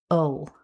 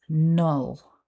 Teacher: Syllable two starts with the nasal consonant N. And then we have that combination of schwa and the dark L sound